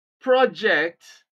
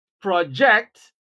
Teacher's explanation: Place stress on the first syllable and what you have is a noun project